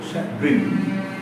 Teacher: And I shall, as a grammarian, it's my duty to introduce the word of the day, that is chagrin, C-H-A-G-R-I-N, broken into 2 syllables, C-H-A, pronounced as S-H-U-H, sh. And grin, for this second syllable, you must give emphasis.